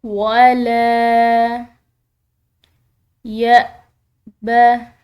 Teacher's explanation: حمزہ کو جھٹکے کے ساتھ ادا کیا جاتا ہے